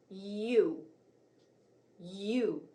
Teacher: sound watch and listen as I make the long u sound my tongue is lifted high in the back of my mouth my lips are rounded and pulled close together